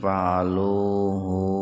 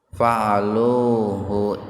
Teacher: Hu-nya jangan dibaca panjang.